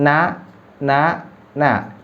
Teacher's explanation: ujung lidah yang ditempelkan di gusi bagian atas